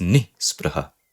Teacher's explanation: Basically, the same upsarga nir that you see in these words, here also this is nir. But due to the presence of a hard consonant, a khar vyanjana, this ra is getting replaced by a visarga. So you have this ni spraha.